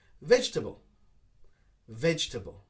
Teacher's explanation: people try to pronounce each syllable of the word but we make it a little bit shorter